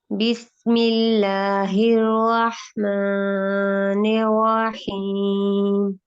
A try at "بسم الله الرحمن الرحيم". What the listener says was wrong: رک جائیے، میم کے اوپر ماں، ایک تو آپ کی آواز گئی ہے ناک میں، غنہ نہیں کرنا. دوسرا اس کو 2 حرکات سے نہیں بڑھانا. بسم اللہ الرحمن الرحیم، بس اتنا.